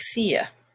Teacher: You, when it's not stressed, is ya